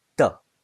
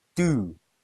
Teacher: The first do, after what, is weak. It's pronounced duh. The do at the end is strong.